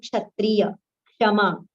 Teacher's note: Partial ka and murdhanya sha